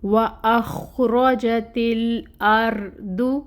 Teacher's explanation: رو کو پر پڑھیں گے، ساکن ہے یہاں پہ، اس سے پہلے زبر کی حرکت ہے تو اس کو پر پڑھا جائے گا۔ وَأَخْرَجَتِ الْأَرْضُ، دود کے اوپر پیش، 1 کاؤنٹ، ٹھیک ہے، اور یہ جو ہے یہ بھی پر پڑھا جائے گا۔